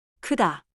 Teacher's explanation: on 크다, 으 keeps flat lips; round them and you slide toward 우.